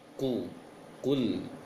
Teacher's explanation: Ini wajar manyung dan harus dimanyungkan karena memang dhammah harokatnya